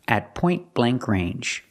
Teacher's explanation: The T in at is a stop T